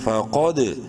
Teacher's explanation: قاف کو منہ بھر کے پڑھنا ہے، دال میں قلقلہ کرنا ہے، ساکن ہے اور حروف قلقلہ میں سے ہے، فا قد، ضاد لام زبر ضل، ضاد کو پراپر اپنے مخرج سے پڑھتے ہوئے بولڈ کرتے ہوئے، لام زبر لا، ضل، सीन ज़बर सा वाव अलिफ मद ज़बर वा 5 अलिफ के बराबर मत करेंगे।